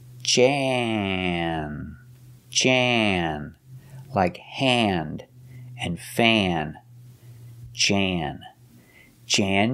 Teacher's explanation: it's before an n so it changes not ah but and the sound goes in your nose when you get close to the end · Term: short a